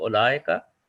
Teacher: we do not pronounce the vowel in the middle. We just go ulaika.